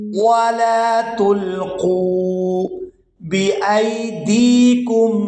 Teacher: حمزہ کو یا ساکن کے ساتھ ملائیں گے تو بغیر کھینچے ادا کریں گے کیونکہ یہ یائے لین ہے